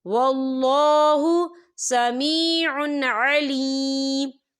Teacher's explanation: یہ دیکھیں سمیع، عین کے پر تنوین ہے اور تنوین کے بعد پھر عین آ رہا ہے، اور عین جو ہے حروف ہلکی کا ورڈ ہے، تو ہم یہاں اظہار کریں گے اور ہم اسے بنا غنّے کے پڑھیں گے